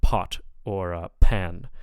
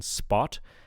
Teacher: The p sound at the beginning of words will be aspirated, so like pot or pan.